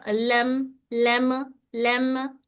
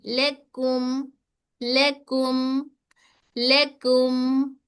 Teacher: मन लेकुम, लेकुम, मीम तवस्सुत है, शिद्दा नहीं देना, कलकला नहीं देना